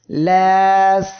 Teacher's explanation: সিন অক্ষরটি উচ্চারণের সময়ও বাতাসটা বের হচ্ছে এটাই হলো হামস এর বৈশিষ্ট্য